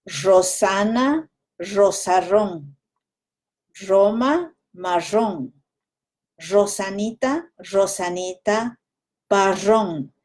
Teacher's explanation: Do you hear me saying sh instead of r? That's the Ecuadorian Andes way of saying it.